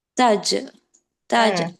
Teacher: தஜ் தஜ் சொல்லும்போது அங்க ஒரு சின்ன ஷேக் குடுங்க கல்கலா பண்ணி சொல்லுங்க